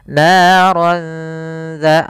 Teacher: Maka kalau ini disamarkan. Naran dza, langsung ke huruf dzalnya sambil ditahan dengan gunnah. Kemudian pada lafal dza, hati-hati jangan terbaca dengan zata lahab dengan huruf zai, karena di sini huruf dzal. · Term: ikhfa